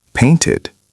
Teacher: Painted sounds like ID because it ends in T.